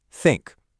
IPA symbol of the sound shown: θ